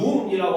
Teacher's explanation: 그러니까 우리가 눈이라고 하면 하늘에서 내리는 눈을 길게 발음을 하거든요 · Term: 긴 소리